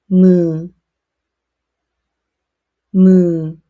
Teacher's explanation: Let air flow through your nose. It makes a soft humming sound. It is similar to the English M.